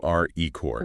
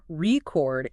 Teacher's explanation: But if I make the second part strong, record, it is a verb.